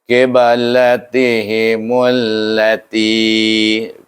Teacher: Ini adalah idgham syamsi, di mana huruf mim ini kita idghamkan kepada huruf lam